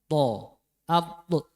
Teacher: di ujung lidah menempel di pangkal gigi seri depan, ya. Pangkal gigi.